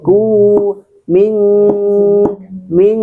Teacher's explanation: dengungnya itu adalah satu ayunan atau dua ketukan.